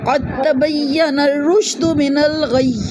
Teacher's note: قاف کو موٹا پڑھیں گے، قاف کو تا سے ملائیں گے، دال نہیں پڑھیں گے، دال مرج ہو جائے گا تا میں، چونکہ دونوں کا مخرج ایک ہے